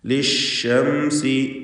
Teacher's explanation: ലിശംസി, ഷീന് വ്യക്തമാക്കി ഉച്ചരിക്കണം. ഷീനിന് തഫഷി എന്ന സിഫത്തുണ്ട്, വ്യാപനം എന്നാണ്